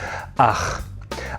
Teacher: In the International Phonetic Alphabet, this represents a voiceless velar fricative, and it sounds like this.